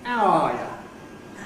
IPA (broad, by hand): aʊ ˈɑː jə